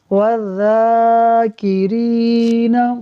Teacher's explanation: ناظرین، اس کے اندر جو ذال ہے، ذال، یہ بھی اس سا کی طرح پڑھا جائے گا۔ جیسے سا پڑھتے ہوئے زبان دانتوں سے لگے گی، ویسے ہی ذال پڑھتے ہوئے لگے گی زبان